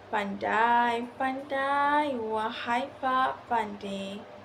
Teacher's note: Perkataan pandai-pandai memerlukan sedikit pemanjangan pada vokal yang sama untuk mengekalkan ritma. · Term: pemanjangan vokal